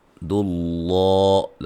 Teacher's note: لفظ اللہ کے لام کو موٹا، اس سے پہلے حرف پر پیش ہے